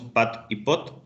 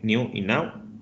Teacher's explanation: si pronunciamos pat y pot, tenemos que cerrar los labios, y si pronunciamos new y now, no lo tenemos que cerrar. Entonces hay una diferencia bilabial entre la pronunciación de estas dos categorías de palabras.